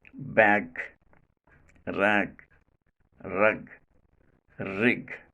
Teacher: the back of the tongue still remains in touch with velum part and not released immediately. Hence, the final g sound in these words is not made plosive, right?